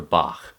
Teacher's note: You're going to say it like the Scottish word lach, or the composer Bach. It's in the back of your throat, it's kind of a gargly sound.